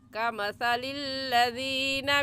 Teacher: और सा का मखरज के ज़बान की नोक दोनों दांतों के दरमियान में लाने से सा निकलता है